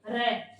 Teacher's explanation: र को बोलते है तब हमारी जीवा ऊपर की साइड में गोल हो जाती है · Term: लुंठित व्यंजन